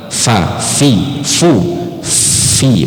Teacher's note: pertemuan Gigi atas dengan bibir bawah dan dihembus ada angin keluar bukan Pi kalau Pi jelas dia tidak akan ada angin keluar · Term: huruf fnya